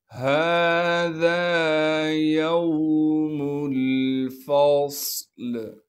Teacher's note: صاد کو موٹا کر کے پڑھیں گے اور صاد میں سیٹی بھی ادا کریں گے، لام کو وقف کی حالت میں ساکن کر دیں گے۔